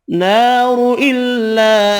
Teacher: نار الا، الف مدہ ایک الف کی مقدار میں، چھوٹی مد تین الف کی مقدار میں کھینچ کر پڑھیں گے، را پیش کی وجہ سے پر پڑھیں گے